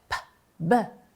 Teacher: Então, se nós fizermos p, b, nós vamos ver que há vibração no segundo elemento e não no primeiro